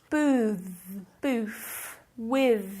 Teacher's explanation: I'm exaggerating this th we obviously don't say the th such a long time